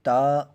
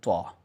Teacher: تا باریک آواز میں پڑھا جائے گا اور طا موٹی آواز میں پڑھا جائے گا